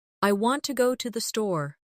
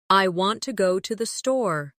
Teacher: The stress is on want and store. The words to and the are much softer.